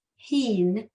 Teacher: it starts out with the h sound so be careful that you're not doing a ch at the beginning